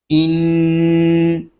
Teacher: نون مشدد ہے، اس کو غننے کے ساتھ پڑھیں گے